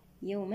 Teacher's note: الواو هنا حرف لين وصلا ومد لين وقفا